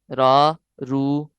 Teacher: را پر زبر یا پیش ہو، یعنی را، رو، یہ موٹا پڑھے جائیں گے